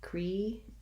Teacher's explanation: We have first syllable stress, creature. · This TU, we've seen this in many word of the day videos, that the TU saying ch, the voiceless CH sound.